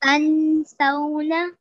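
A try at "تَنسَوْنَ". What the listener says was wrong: So with the vowelin, you did prolong it. Could you prolong it for a bit longer, a little bit longer, tiny bit?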